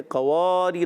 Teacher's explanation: ایک الف سے زیادہ نہیں کھینچیں گے